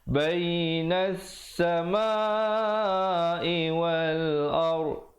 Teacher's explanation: Bainas samai wal ard, ra di situ menjadi tebal